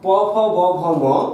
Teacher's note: প, ফ, ব, ভ, ম, এদের উচ্চারণের সময় ওষ্ঠ এবং অধর এক জায়গায় আসছে, তাই এদেরকে আমরা বলছি ওষ্ঠ ব্যঞ্জন।